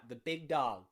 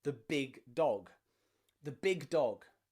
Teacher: that is without that aspirated gu sound that you would hear in british english